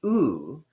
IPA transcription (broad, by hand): u: